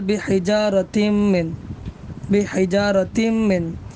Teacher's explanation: تنوین کے دو زیر کو ہم ڈائریکٹ کس سے ملائیں گے، میم سے ملا دیں گے، مدغم کر دیں گے